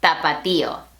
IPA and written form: ta.pa.ˈti.o (Tapatío)